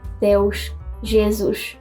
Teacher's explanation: European Portuguese uses /ʃ/ for words that end in -s